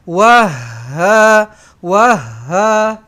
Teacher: Pastikan kita tekankan ha ni eh sebab dia bersabdu. Jadi kena tekankan lebih sikit.